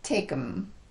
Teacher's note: a phrase like take them will be reduced to take them you're basically transitioning from that K to the m with as little movement as possible · when we reduce the word them the vowel also gets reduced to a schwa um there's almost no tongue movement at all on that vowel so a phrase like take them will be reduced to take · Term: reducing pronouns